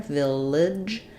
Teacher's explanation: our second syllable is very reduced we'll have a little schah there Village and the letters g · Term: reduced vowel, first syllable stress